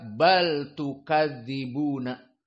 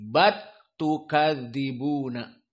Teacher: Di sini usul dari qiraah Hamzah dibaca seperti Al-Kisai, di mana bal tukadzibun, lam sakinah bertemu dengan ta, diidghamkan lam ila ta.